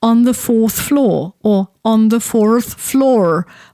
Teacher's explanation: whether people would use the R at all, and if they would use it before a consonant in fourth and at the end of a word in floor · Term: rhotic R